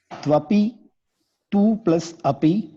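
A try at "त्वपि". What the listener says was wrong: Good.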